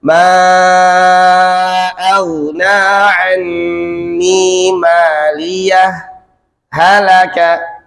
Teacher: Jadi jedanya berbeda dengan seperti jeda ketika wasol. Fokus, saktah, berhenti sejenak tanpa bernafas.